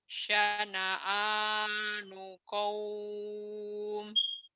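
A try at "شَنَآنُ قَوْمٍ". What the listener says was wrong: Kurang tebel. Syana'anu qaum. Syana'anu qaum. Kurang tebel. Syana'a, syana'a, syana'anu qaum.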